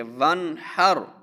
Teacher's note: اب یہاں پر نون پر ہم غنہ نہیں کریں گے کیونکہ نون کے بعد ہا ہے اور یہ ہا حروف حلقی میں سے ہے. ہا حروف حلقی میں سے، اس لیے ہم نون پر غنہ نہیں کریں گے.